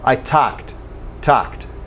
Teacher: in talk or talk the L has no sound okay do not pronounce the L I talked talked no L